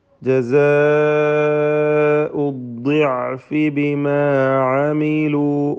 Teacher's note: അദ്ദിഅഫ് ദ്വാദിൻ്റെ ഉച്ചാരണമാണ് ശ്രദ്ധിക്കേണ്ടത്. കസ്റായതിനാൽ കുറഞ്ഞ തഫ്ഖീം കൊടുത്താൽ മതി.